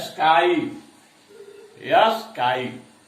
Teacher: स्काई में आ जोड़ ई आ रहा है